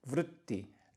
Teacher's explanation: This R with the dot below it is actually a vowel. We don't have R as vowel in English, but it's a vowel.